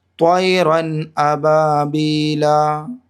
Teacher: یہاں پہ گنہ نہیں کرنا ہے، ٹھیک؟ ظاہر کرنا ہے، جلدی پڑھنا ہے بغیر گنہ کے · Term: اظہار